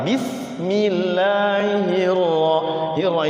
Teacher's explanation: Bismillah ini kan dia tipis tarkik ya. Sinnya juga tipis sama.